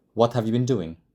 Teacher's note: we have sentence stress on the important words what been doing